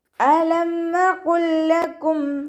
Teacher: ഇവിടെ സുക്കൂനായ ലാമ് ഹർക്കത്തുള്ള ലാമിലേക്ക് ലയിപ്പിച്ചിട്ട് ഓതി കൊടുക്കുക കേട്ടോ. ഇതാ മുത്തമാസിലാണ് ഇവിടെ വരുന്നത്.